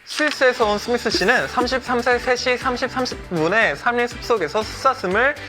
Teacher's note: I think his lisp adds to his overall soft speech and his polite tone.